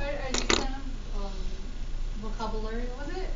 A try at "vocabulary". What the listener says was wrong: Vocabulary. Well, no, you just put the emphasis on the wrong syllable. wrong syllable. Vocabulary. Emphasis on the wrong syllable.